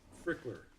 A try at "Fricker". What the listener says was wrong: No, there's no L. Fricker.